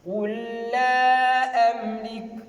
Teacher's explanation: on a négligé le premier lam qui est de sukun et on a mis le shadda, c'est-à-dire on a prononcé le shadda dans le deuxième lam pour utiliser l'idgham.